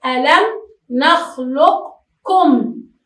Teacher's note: بسبب التقارب بين القاف والكاف نقول ألم نخلقكم، ولا وجود لحرف القاف في هذه المسألة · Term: إضغام المتقاربين